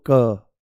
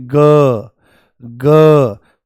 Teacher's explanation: क जो है ये अघोष है और ग जो है ये सघोष है